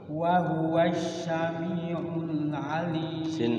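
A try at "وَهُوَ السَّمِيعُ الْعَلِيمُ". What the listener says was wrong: Sin kecil. Wa huwas sami, sin biasa.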